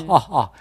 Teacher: 목소리에서 나오는 후음 같은 거